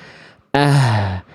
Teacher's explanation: H besar dilafalkan dari tenggorokan pangkal atau tenggorokan paling bawah atau tenggorokan paling dalam